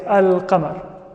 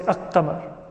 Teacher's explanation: And then there are 14 consonants which are known as al-huruf al-qamariyya, because when we add alif lam to the word qamar, we pronounce the lam.